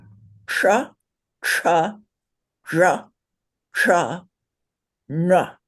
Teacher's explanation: you put your tongue on the bump in the back of your mouth and say cha